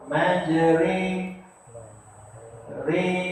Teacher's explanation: Apa dia imalah? Menyebut baris fathah condong ke arah kasrah. · Jadi ro yang dibaca dengan imalah ataupun condong, maka sebutan dia adalah nipis.